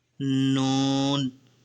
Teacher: noun comes out from the edge of the tongue and the part of the roots of the teeth towards the palate